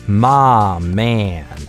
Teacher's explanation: вместо my у него звучит mah man, вместо дифтонга /aɪ/ звучит долгий [aː]. Mah man. И это тоже характерный момент южных акцентов, о котором я рассказывал в видео про дифтонг /aɪ/.